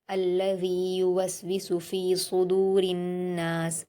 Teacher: दाल पर वाव मद्दा है, दो हरकत खींच कर पढ़ेंगे।